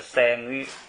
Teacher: 这个女注意是读高调平声，因为这个啊是鼻音，它的上边或者前边一有东西啊，就要读高调。